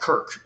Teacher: the words for church in other Germanic languages keep that K sound instead of palatalizing it to a ch. And so you get a word like kirk, including in, for instance, Scottish English, which is heavily influenced by Norse languages, given the Viking invasions of about 1300 years ago.